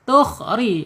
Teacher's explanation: ditarik ya lidahnya ke dalam, dicondongkan ke dalam, jadi getarannya hilang. Dia hanya 2 saja getarannya, tidak banyak-banyak, nggak boleh ya.